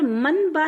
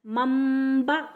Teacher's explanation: نون کی آواز کو میم سے بدل کر پڑھنا چاہیے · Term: اقلاب